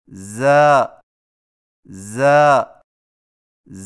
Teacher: زا کی ادائیگی میں زبان کی نوک کو ثنایا سفلی کے کناروں سے مضبوطی سے لگا کر باریک اور سیٹی جیسی آواز میں پڑھیں